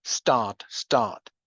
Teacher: the t in start is not aspirated because there's the s before start start not aspirated.